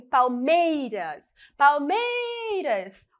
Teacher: meiras é a minha sílaba tônica é a sílaba mais forte